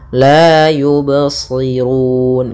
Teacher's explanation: mengalir suara ba-nya, tidak putus dan tidak pula saktah dan tidak pula ada tambahan hamzah. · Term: qalqalah